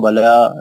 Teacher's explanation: لام پہ کھڑا زبر 2 حرکت سے پڑھیں گے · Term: مد اصلی